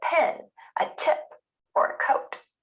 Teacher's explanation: when these sounds come at the beginning of words or stressed syllables, they're pronounced with a gentle puff of air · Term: air puff sounds